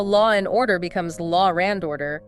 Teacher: we have linking, like how law and order becomes law ran order.